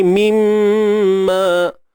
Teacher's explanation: wajibul gunnah, wajib kita dengung kadar 2 harakat.